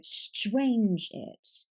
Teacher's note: The first syllable has the stress.